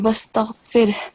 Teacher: Make sure that the sound of ha is clear and you don't just stop at ra